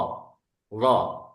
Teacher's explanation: D ini pangkal lidah kita naik. Pangkal lidah kita naik sehingga menjadikan huruf ini salah satu daripada huruf tebal.